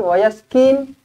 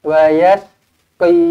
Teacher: Tebalkan huruf qaf. Jangan wayaskin. Kalau kin huruf kaf. Ini huruf qaf tebal.